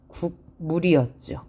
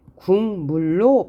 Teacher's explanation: 뒤에 있는 미음 때문에 기억이 이응으로 바뀌었어요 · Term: 역행 동화